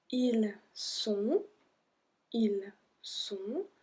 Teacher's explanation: So we don't pronounce the T at the end.